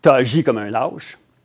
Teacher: avec une diphtongaison, un trait typique du français québécois, très fréquent.